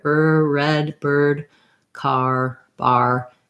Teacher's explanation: That R is more in the middle of the mouth than the French R is.